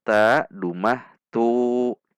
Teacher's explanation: Jika ta, dhammah, tu, itu pangkal lidah kita rileks atau turun. Namun, ini huruf isti'la, sehingga saat dhammah tetap tegangkan pangkal lidah kita sehingga huruf menjadi tebal.